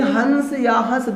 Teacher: देखिए हंस या हंस दोनों को उच्चारित करने में थोड़ा सा आपको ये ध्यान देना है कि इसके उच्चारण में हवा नाक से भी निकल रही है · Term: अनुनासिक